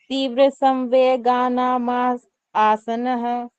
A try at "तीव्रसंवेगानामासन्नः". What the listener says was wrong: माँ के बाद फिर आसन्न नहीं बोलना, माँ के बाद फिर स बोलना, क्योंकि आपने मैं में ए जोड़ दिया ना तो माँ बन गया।